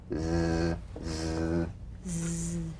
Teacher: The Z cognate S, a voiced S sound fricative. The tongue rim should gently touch the upper gum ridge.